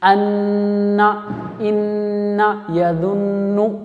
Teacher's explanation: اس طرح نون کی آواز کو تھوڑی دیر کے لیے ناک میں گھمانا چاہیے، اس طرح اسے غنہ کرنا چاہیے۔